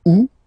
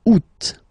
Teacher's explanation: And then here, two options, because, well, two options are acceptable in French. The first one, you don't pronounce the final T.